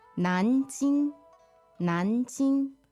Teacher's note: All right, so the tones on Nanjing. Second and first.